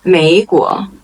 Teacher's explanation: 美 is the third tone 国 is the second tone